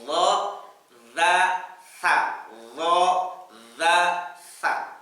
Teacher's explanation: Maksudnya dua taraf, dua ujung. Ujung lidah dan ujung gigi seri atas bertemu menghasilkan tiga huruf ini.